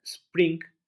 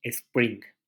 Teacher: lo que normalmente se hace es agregar un fonema extra al inicio de las palabras una e